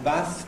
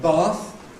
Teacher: the move from short vowel in Bath to long vowel in Bath is an innovation